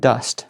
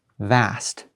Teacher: listen to the end of these words right it's not voice there's no voice so it's a short vowel